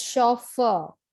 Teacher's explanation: the first syllable for the british english it is chauffeur and for the american english the stress is on the second syllable